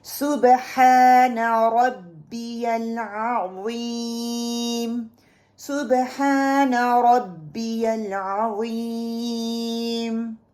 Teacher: عین کا جو مخرج ہے وہ مڈل آف مائی تھروٹ ہے